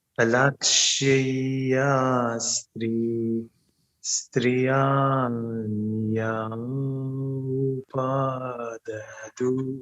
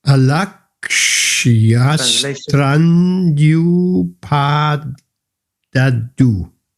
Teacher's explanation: Vowel means A, E, O, and U. So the Y at the end of the first word and a vowel, in this case a U, then the word becomes one long word. It slurs over.